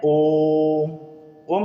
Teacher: तीन मात्राओं के बराबर समय लग रहा है यानी कि दो से अधिक मात्राओं के बराबर समय लग रहा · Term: प्लुत